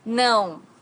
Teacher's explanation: não has a very unique sound in Portuguese because it's a nasal sound